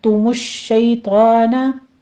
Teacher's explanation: کے اوپر ضمہ ہے، اس کو تمش نہیں کہنا، تُمُ الشَّيْطَانَ، شین کے اوپر تشدید ہے، سختی سے ادا کرتے ہوئے آپ نے آگے یا لین ادا کرنی ہے ، تو آپ کو پڑھتے ہوئے فتح قائمہ ہے، 2 کاؤنٹ